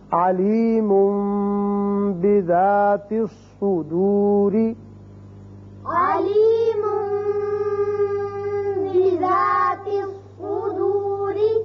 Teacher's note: جب بھی نون ساکن یا تنوین کے بعد حرف با آ جائے تو وہاں اقلاب کی وجہ سے ایک الف کے برابر آواز ناک کے بانسے میں ٹھہرتی ہے